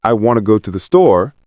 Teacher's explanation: in I want to go to the store, the words want, go, and store are stressed